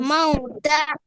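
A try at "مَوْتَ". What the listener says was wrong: Mauta, mashallah.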